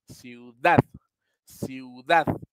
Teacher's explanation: la palabra ciudad tiene la sílaba tónica en Dad